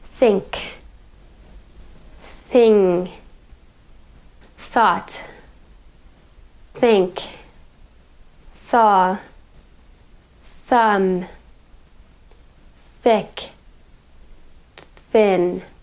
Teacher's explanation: they're a little bit forward or a little bit back and you're going to feel that continuous airflow through that production of the sound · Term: voiceless th sound